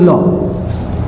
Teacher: ऊपर टच होती है और जो हमारी अंदर की जो ध्वनि है वो जीभ के दोनों साइड बाहर निकल जाती है। तो वो एकमात्र वर्ण है वो है आप लोगों का लौ। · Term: पार्श्व वर्ण